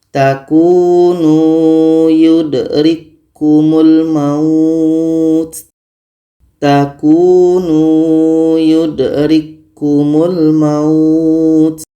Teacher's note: k ini sudah sempurna masuknya ke huruf k yang kedua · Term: idgham mutamatsilin